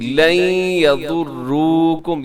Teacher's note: جی لن یضروکم، یہاں ادغام ہے، نون ساکن کے بعد یا ہے، تو یہاں ادغام کریں گے غنے کے ساتھ